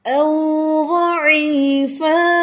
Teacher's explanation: او واولین ہے، ہونٹ گول کر کے اس کو مقدار دینی ہے